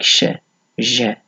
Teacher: Fricative, so partial obstruction with friction, like sh, j.